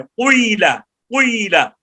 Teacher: وہ جب قی کہتے ہیں تو ہونٹوں کو گول کر کے اشمام کرتے ہیں, قیلا ہونٹوں کو گول کر کے نا تو پھر قاف کے نیچے زیر اور یا پڑھیں قیلا قیلا, یہ امام کسائی ایسے پڑھتے ہیں.